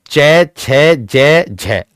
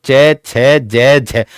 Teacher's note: आपका जो जीभ का मध्य भाग है ऊपर तालु को स्पर्श कर रहा होगा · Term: तालुव्य